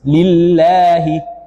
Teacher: lafaz Allah didahului oleh huruf kasrah maka dibaca tipis